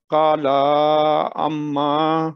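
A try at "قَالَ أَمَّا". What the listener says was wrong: لام کو لمبا نہیں کریں. کالا،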